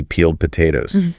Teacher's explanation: after voiced sound like the L in peel, the ed sounds like a d